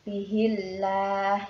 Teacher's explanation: Bihillah ya, huruf ha-nya berharokat kasroh, maka lafadz jalalah harus dibaca tipis ya atau tarkik